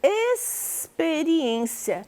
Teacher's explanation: Eu produzi o som do S mais alongado como se fossem 2 S's.